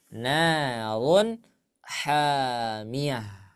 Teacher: kalau diwakafkan atau kita berhenti di sana, maka dibaca ha.